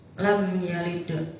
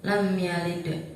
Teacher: Di situ ada huruf qalqalah yang matinya asli di tengah kalimat, maka cara bacanya memantulkan huruf qalqalah tersebut. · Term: qalqalah sugro